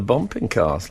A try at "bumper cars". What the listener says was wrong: Do you mean bumper? It's not bumping. Bumper. Bumper cars.